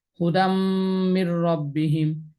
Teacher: দিছি যে রেখার স্থলে দালের উপর তানবিন, তানবিনের পরে বা গুন্না হরফ মিম আসছে, এই জন্য এটাকে ঈদগামে বা গুন্না হিসেবে মিলিয়ে পড়বে